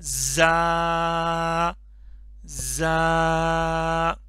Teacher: اس میں یہ سین کی طرح ہے، سیٹی کی آواز آئے گی، تھوڑا سا سختی کے ساتھ پڑھیں گے. ٹھیک ہے، زال کا اس میں ساؤنڈ نہیں بنانا ہے، را پتلا کر کے نہیں پڑھنا، زا سختی کے ساتھ.